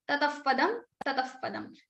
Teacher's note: If after Visarga you have pa or fa, then the Upadmani sound, that is fa, will come in the place of Visarga